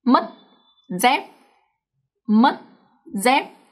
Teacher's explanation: when a Vietnamese word ends with the consonant T, C, or P, then the up tone is pronounced much shorter than the normal word. So in here, mất we have T and dép we have P. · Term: up tones